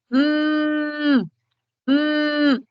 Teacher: qué se refiere e es cuando ambos labios articulan el sonido son sonidos que se articulan con el acercamiento del labio inferior Al labio superior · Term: bilabial